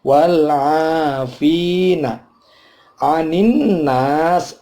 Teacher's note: ada nun bertasydid, namanya gunnah, dibaca dengung, udaranya keluar lewat hidung. Anin nas, ini nas panjang karena fathah ketemu alif, tapi sinnya sini ada waqaf, qaf lam, al waqful aula, maka sinnya tidak dihidupkan si, tapi dimatikan.